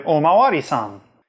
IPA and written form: omawaɾisan (お巡りさん)